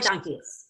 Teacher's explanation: There was too much passion. The two syllables in passion were equally stressed. Keys was very loud.